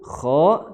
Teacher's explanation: makhrajnya adalah di tenggorokan paling atas, tenggorokan paling atas atau di belakang pangkal lidah